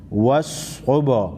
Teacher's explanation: با حروف قلقلہ میں سے ہے، با کو ہلا کر پڑھیں گے